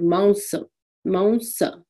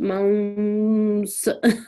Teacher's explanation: The M is barely pronounced. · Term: anuswar